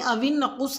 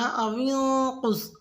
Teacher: اوینقص میں نون ساکن پہ اخفا کریں گے، یعنی اوینقص نہیں پڑھنا، اوینقص۔